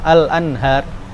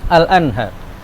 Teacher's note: Al-Anhar ada ghunahnya tidak terdengar kan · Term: izhar nun sakinah dan tanwin